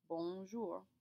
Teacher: It's a nasal sound, which means the air is going to come from your nose rather than your mouth. In order to achieve this, you have to curl up your tongue in the back of your mouth to force the air up.